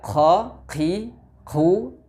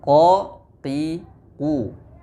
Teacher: Karena pada proses pengucapan huruf Qaf, pangkal lidah kita terangkat dan menempel. Maka dengan begitu tidak ada celah untuk mengalirnya udara atau angin. Maka huruf Qaf tidak dibaca qa, qi, qu seperti huruf Kaf, tapi qa, qi, qu. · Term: jahr